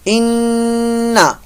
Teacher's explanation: غننے کے مطلب ناک کے اندر آواز کو لے جانا. غننے کی مقدار ایک الف کے برابر ہے. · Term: نون مشدد کا غنہ